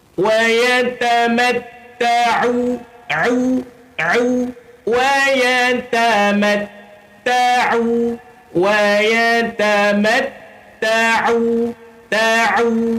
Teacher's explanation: Huruf ain tuan-puan, dia duduk ni dekat sini, di tengah-tengah kerongkong. Dia bukan di hidung tuan-puan.